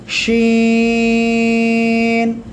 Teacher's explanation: আছে যে পড়া দেওয়া হয়েছে এরপরে আমরা এই অক্ষরটা উচ্চারণ করব জিহ্বার মধ্যখান তার বরাবর উপরে তালু সঙ্গে লাগিয়ে সা শব্দ করে উচ্চারণ হবে